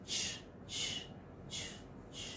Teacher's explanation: Ch is a voiceless post-alveolar affricate.